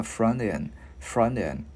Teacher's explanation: Chữ T để dành một hồi mình luyến qua chữ E thành chữ D tiếng Việt nhẹ là frontend, frontend.